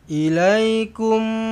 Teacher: pastikan dengungkan dengan 2 harakat, rapatkan bibir sebab jumpa dengan mim sabdu, idgham mislain saghir. Mim kosong bertemu dengan mim sabdu.